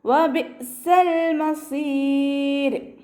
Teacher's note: ഹംസ ഖൽഖല letter അല്ലാത്തത് കൊണ്ട് half സുക്കൂന് കൊടുക്കുക കേട്ടോ. വബിഅ്സൽ മസീർ, വബിഅ്സ എന്ന് ഉച്ചരിക്കരുത്, ഫുൾ സുക്കൂനിൻ്റെ സൗണ്ട് കൊടുക്കരുത്.